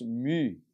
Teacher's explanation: um som entre o u e o i ele fica mais para o som de i do que para o u